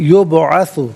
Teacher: یبعث میں بعض ساکن ہے لیکن حرف قلقلہ ہے تو آواز لوٹتے ہوئی محسوس ہونی چاہیے